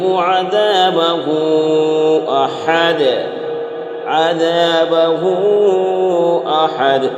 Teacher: ہو میں کھینچ کر پڑھیں گے کیونکہ یہاں پر مد منفصل ہے، اس لیے یہاں پر کھینچ کر پڑھیں گے۔